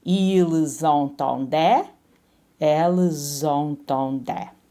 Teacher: So even though we don't pronounce the S in il and el plural, as soon as we see that vowel, we sort of connect them with a z sound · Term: liaison